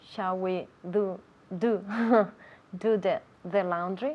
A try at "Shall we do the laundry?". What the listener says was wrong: Yeah, now be careful with that TH. Do, the D, your tongue is inside and against the roof of your mouth. D, do. Then with the TH, the tongue comes out. Do the laundry.